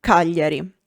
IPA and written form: ˈkaʎʎari (Cagliari)